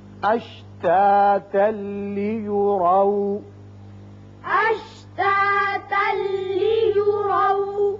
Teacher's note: یہاں اشتاتا وقت کی صورت میں ہے, لیکن یہاں اوپر لا لکھا ہوا ہے, ملا کر پڑھنا زیادہ بہتر ہے. ملانے کی صورت میں یہاں تنوین کے بعد لام آ گیا, ادغام بغیر غنہ ہوگا, اور آ کے اوپر زبر ہے, اس کو پر پڑھیں گے.